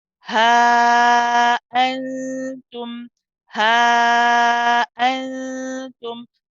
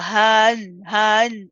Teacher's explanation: We also have the hamza here with a fatha. So after saying ha, we stop the voice, we start again to get the right sound for the hamza.